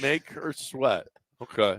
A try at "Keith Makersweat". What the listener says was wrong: No, don't slow it down.